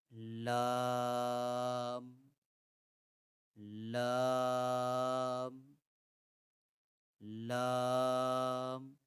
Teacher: When the front part of the tongue touches the gums behind the upper front teeth, the letter Lam is pronounced. · the sides of the tongue make contact with the upper gums, extending from the first premolar on one side to the first premolar on the other side